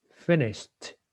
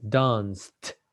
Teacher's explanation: no vibration so it will be pronounced like a t